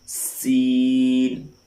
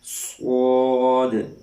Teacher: سین کے اندر باریک اور صاد کے اندر موٹی سیٹی کی آواز نکلنی ہے۔